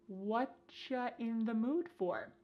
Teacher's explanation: Here the word you has been reduced to cha. Cha. This is extremely common in spoken English that the word you gets changed up in a lot of ways.